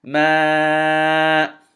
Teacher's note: I extended the Mim Fatha and then Alif Mad to 4 counts.